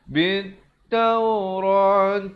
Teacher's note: ada bunyi hamasnya, bunyi anginnya pada huruf ta yang bertanda mati asli.